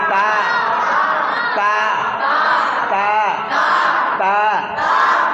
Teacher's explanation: জিভের ডগা উপরে দাঁতের গোড়া